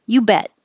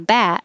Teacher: The jaw is more closed. And the vowel is a little shorter because the last consonant in the word is T. T is voiceless. There's no vibration in the throat.